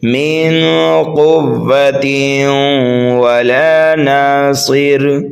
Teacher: ہم ادغام کریں گے اس لیے کہ تنوین کے بعد حروف یرملون میں سے واو آ رہا ہے